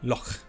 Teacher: It kind of goes to the back of the throat, and it's a little bit growly. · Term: glottal sound